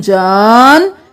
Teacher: یہاں پر جا کو 5 الف کے برابر کھینچیں گے، نون کے ساتھ ملاتے ہوئے نون پر تشدید ہے، دیر بھی لگائیں گے. جان نون زبر نا جان وخلق الجان.